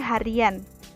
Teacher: juga akan muncul bunyi pelancar y bila kata berakhiran I diberi sufiks an